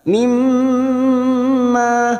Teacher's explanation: mim yang bertasdid guna musaddada mim kita dengungkan dan ditahan selama 3 harokat